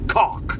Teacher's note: The unvoiced velar plosive goes into a broad vowel and then ends with an unvoiced velar plosive. · cock starts with an unvoiced velar plosive